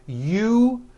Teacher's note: That second syllable, ju, the one with the underline, needs to be voiced. Put your hand on your throat and feel for the vibration in the second syllable.